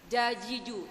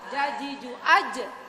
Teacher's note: jadi usahakan anginnya itu ditahan kalau Za kita keluar angin tapi kalau Jim enggak